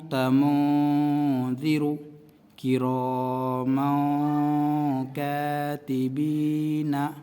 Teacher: نون کی آواز ناک میں چھپا کر پڑھتے ہیں، اخفاء جب ہوگا۔